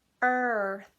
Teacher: your tongue is going to curl back for the R, and then it's just going to fling itself forward and come out between your teeth for the TH.